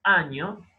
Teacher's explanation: esa A no se pronuncia como una A independiente, sino que su articulación está afectada por esa nasal ñ, ¿no? Entonces, parecería ir nasalizándose a medida que llegamos a la articulación efectiva de la ñ.